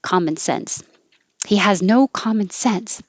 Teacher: when we say the term common sense we put the stress on sense